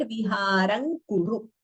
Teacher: So when you combine viharam and kuru, we chant it as viharam kuru. And please note to not prolong the u in the end